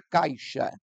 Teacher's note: o cai mas a pronúncia mais forte é da vogal a essa letra i que ficou junta da vogal ela tem uma força de pronúncia atenuada menor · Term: semivogal